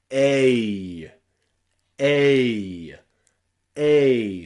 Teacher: EI in English is very often pronounced A. Remember, this is a diphthong sound, so we glide one vowel into another, but it's one sound.